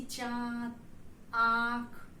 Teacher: हवा नाक और मुंह दोनों से निकलती है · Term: अनुनासिक